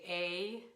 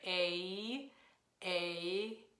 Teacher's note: When we're saying the alphabet, we say A, which makes a diphthong. It makes two vowels smushed together. A. So really we just want the first part of that sound, which is A.